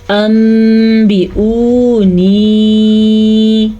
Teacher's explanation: اس کو ادا کرنے کا قاعدہ یہ ہے کہ نون کے بجائے میم پڑھا جائے گا اور غنّے کے ساتھ پڑھا جائے گا